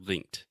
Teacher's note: you were just adding a t sound after the K